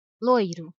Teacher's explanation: a letra O é pronunciada com mais força que a letra i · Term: semivogal